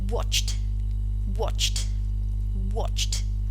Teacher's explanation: past tense morpheme realized it is just as the previous one it is realized as the voiceless alveolar plosive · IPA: /t/